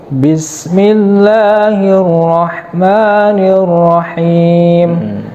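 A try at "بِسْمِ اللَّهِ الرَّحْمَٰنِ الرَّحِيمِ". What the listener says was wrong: Lahnya kurang sedikit. Satu alif sedikit lagi. Tuh, 2, 3. Bismillahirrahmanirrahim.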